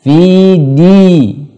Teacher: dal sifatnya syiddah, jangan sampai berangin, tidak ada angin